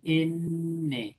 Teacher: Por ejemplo, mira, el sonido N, el sonido N se produce cuando se junta la lengua y el alveolo, es decir, es un sonido alveolar. Así, N, lengua y alveolo.